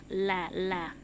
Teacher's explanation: Lam keluar dari ujung lidah bertemu dengan pangkal gigi seri bagian depan sampai ke samping.